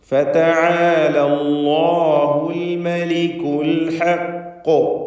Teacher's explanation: അൽ ഹഖ് ഖാഫിൽ ഖൽഖല കുബ്ര നൽകി വ്യക്തമാക്കി ശബ്ദം ചലിപ്പിച്ചുകൊണ്ട് സുക്കൂൻ നൽകി വഖഫ് ചെയ്യണം. ഖാഫിന് തഫ്ഖീമും നൽകേണ്ടതാണ്.